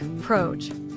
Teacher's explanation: If you say the word project and you drop the final T, it sounds like proj. The listener's brain has to stop and guess what you meant.